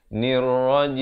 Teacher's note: Di akhir baru dirapatkan mulut bagi menyempurnakan huruf mim. Jangan tutup awal jadi jim.